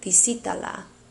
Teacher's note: Notice I did accent the stressed vowel, which was the 1, 2, 3, the third vowel from the end.